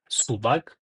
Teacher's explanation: p harfi oʻrtasida kelyapti u bor bundan oldin undan keyin a bor shuning uchun biz buni b deb talaffuz qilyapmiz